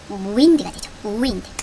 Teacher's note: 혼자 맨 앞에 있을 때 입을 동그랗게 모아주는 우 소리로 시작을 합니다